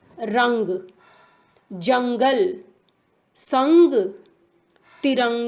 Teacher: इसका उच्चारण नाक से किया जाता है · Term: अनुस्वार